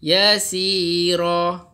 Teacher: Asalnya yasiran, tapi bila nak waqaf kita sebut yasira. Ra alif ra macam tu.